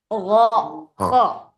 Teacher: Jadi gain gho itu kalau bisa g-nya agak hilangin ya. Jadi enggak benar-benar persis ada g-nya enggak tapi go agak ngambang-ngambang g-nya.